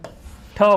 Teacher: આ જે ઠ છે એ મહાપ્રાણ પણ છે અને અઘોષ વ્યંજન પણ છે